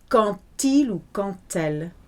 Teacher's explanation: When you've got a word like quand that ends with a D and then the next word starts with a vowel, the D will often sound like a T when you do the merging thing